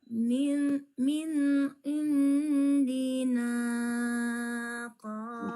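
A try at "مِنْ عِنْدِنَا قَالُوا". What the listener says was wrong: Panjang kali nanya, nggak boleh. Nggak boleh panjang kali. Cuma dua ketuk.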